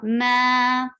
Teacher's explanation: B, very short sound. Ma, 4 haraka long because this is harf mad and a hamza comes right after it.